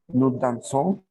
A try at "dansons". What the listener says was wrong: Nada más hay que hacerlo un poquito más nasal. Dons, dons.